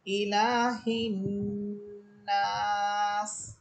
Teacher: এখানে নুন হরফে 3 আলিফ টান হবে এবং গুন্না হবে